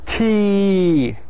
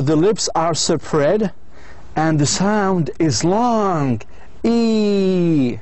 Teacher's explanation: So the lips are spread and the sound is long. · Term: long vowel